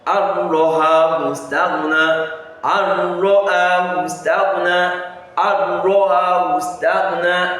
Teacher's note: So the nun has been inserted into the raw, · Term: idgham